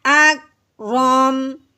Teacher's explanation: یہ جو کاف ہے یہ حروف قلقلہ نہیں ہے، قاف حروف قلقلہ ہوتا ہے، اس کو ہلانا ہوتا ہے۔ آپ نے اکرم نہیں کر دینا بلکہ کیا پڑھنا ہے، اکرم۔